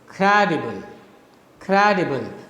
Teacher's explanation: that there is a dactyl in tactile there are three syllables the first one is stressed second and third are unstressed so it's it has a falling rhythm · the first one is stressed and the following remaining two are unstressed. So you have first stressed, then unstressed, and then unstressed.